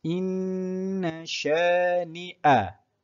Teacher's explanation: apabila nun bertanda syaddah, kita perlu buat apa? Kita perlu baca dengan dengung sebanyak 2 harakat.